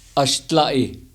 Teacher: You have the bar L. You have the glottal stop.